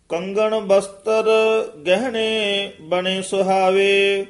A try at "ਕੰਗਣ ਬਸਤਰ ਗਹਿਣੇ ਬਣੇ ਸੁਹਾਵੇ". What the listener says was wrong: ਬਸਤਰ ਬਸਤਰ ਰਾਰਾ ਪੂਰਾ ਨਹੀਂ ਲਾਉਣਾ। ਕੰਗਨ ਬਸਤਰ ਗਹਿਣੇ, ਇੱਥੇ ਵਿਸਰਾਮ। ਬਨੇ ਸੁਹਾਵੇ।